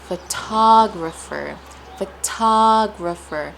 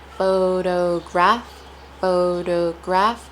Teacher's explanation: So we stress the do in photograph and the ta in photographer. So the stress shifts to the second syllable in photographer, and the stress is on the first syllable in photograph